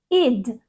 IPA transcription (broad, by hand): ɪd